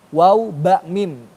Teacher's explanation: Lisyafatain, akhirnya ya kedua bibir.